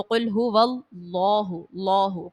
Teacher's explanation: اللہ کے لام سے پہلے جب زبر اور پیش ہو تو اس کو پر پڑھا جاتا ہے، تو قل هو اللہ، اللہ پر پڑھیں گے، موٹا پڑھیں گے،